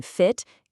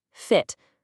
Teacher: for lax or short vowels, like the I in fit, your mouth is way more relaxed, and the sound is quicker, more clipped.